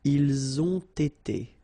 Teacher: you get first the liaison z, and then you get the t